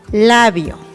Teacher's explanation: labio, donde la I y la O forman un diptongo.